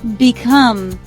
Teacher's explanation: Become two syllables. Second syllable is stressed.